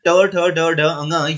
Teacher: ट ठ ड ढ अंग, ये मूर्धा से बोले जाते हैं।